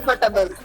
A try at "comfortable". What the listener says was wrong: Not the R, you don't pronounce. The R is silent here. Comfortable.